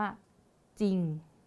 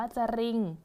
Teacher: เขาบอกเลยก็คือเรานะคะจะอ่านออกเสียงเพียงแค่พยัญชนะต้นตัวแรกนะคะแล้วก็ผสมกับสระแล้วก็ตัวสะกดนะคะทั้งหมดนี้เลยอ่ะถ้าเกิดว่าเป็นอย่างนั้นนะคะตัวแรกจะอ่านว่าอะไรคะคำแรกจะอ่านว่าเขาก็จะอ่านว่าจริงอย่างนี้เลยค่ะเราจะไม่เอารเรือเข้ามานะคะจะไม่อ่านว่าจะRingนะคะอาจารย์จริงไปเลย เราจะปิดเสียงของรอเรือไปเลยนะคะ